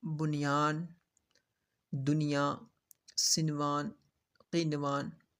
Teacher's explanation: نون ساکین کے بعد حروف یرملون میں سے یا واو میم نون یؤمنو اسی کلمہ میں آ جائیں تو بغیر غنہ کے ظاہر کر کے پڑھیں گے۔ اس کو اظہار مطلق کہتے ہیں، جیسے بنیان، دنیا، سنوان، قینوان۔